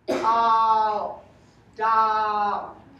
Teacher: stay on the ah. That's actually the ah-o diphthong.